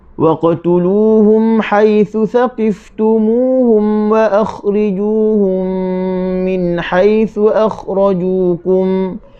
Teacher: Okey, poin yang ke-10, mana-mana huruf mim sakinah yang terdapat selepasnya huruf mim, maka dibaca dengan masukkan mim ke dalam mim beserta dengan 2 harakat